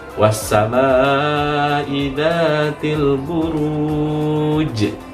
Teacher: Ada huruf terakhirnya dibaca qalqalah huruf jim.